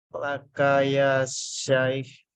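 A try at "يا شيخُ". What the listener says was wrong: Jangan dimatikan, ya.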